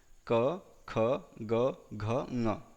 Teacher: अकार क वर्ग क, ख, ग, घ और विसर्ग का उच्चारण स्थान क्या है? कंठः